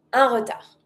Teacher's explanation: Do not pronounce the D.